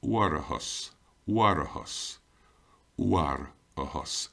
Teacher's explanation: Then you here we have our R and our TH, so we have to put in our epenthetic vowel, which is O. And our final TH, of course, is our H sound, hus.